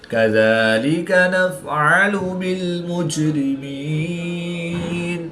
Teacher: جیم ساکن ہے تو یہاں پر قلقلہ صغریٰ کر کے پڑھیں گے